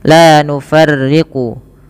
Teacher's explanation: la nufarriqu yang rnya itu dibaca dengan tipis